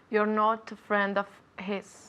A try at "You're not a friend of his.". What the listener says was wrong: Very good pronunciation.